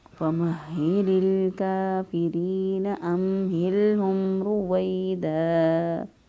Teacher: موجود ہو تو ایک الف کے برابر لمبا کر سکتے ہیں، ایک سے دو الف کے برابر یہاں پر یا لین جو ہے وہ لمبی ہو جائے گی